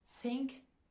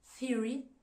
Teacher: on va placer en fait la langue entre les dents il y a aucune vibration au niveau des cordes vocales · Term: TH sourd